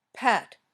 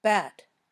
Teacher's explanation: your lips close then pop open